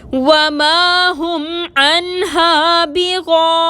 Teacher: یا مدہ ہے، 2 حرکت کے برابر کھینچ کر پڑھیں گے، نون کو ساکن کر کے وقف کریں گے